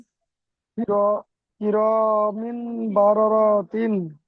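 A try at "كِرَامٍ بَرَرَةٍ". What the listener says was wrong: জি, ঠিক আছে, মাশাআল্লাহ,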